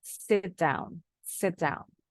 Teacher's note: huruf t-nya ditahan Sambungkan ke D